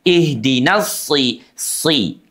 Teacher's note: sod itu seluruh permukaan lidahnya terangkat ke langit-langit, lengket. Ihdinas si. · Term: huruf sod